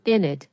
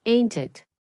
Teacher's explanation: Many people reduce isn't it to in it and some say ain't it.